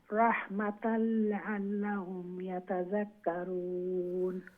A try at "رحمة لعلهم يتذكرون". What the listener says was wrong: মাশাআল্লাহ, খুবই সুন্দর তিলাওয়াত করছেন, আপনার প্রনাউন্সিয়েশন উচ্চারণ এগুলা খুবই সুন্দর।